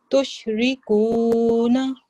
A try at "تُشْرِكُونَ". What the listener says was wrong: جی وقف کرنا ہے، آیت کا نشان ہے تشرکون.